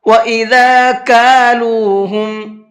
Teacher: کالو میں چھوٹا کاف ہے، بڑا قاف نہیں ہے، قالو نہیں پڑھنا ہے۔ قالو اور کالو کے اندر بہت بڑا فرق ہوتا ہے۔